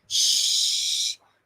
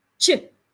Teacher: sound sh put your teeth together and release the sound slowly for the sh sound you release the sound slowly sh for the CH sound you release the sound immediately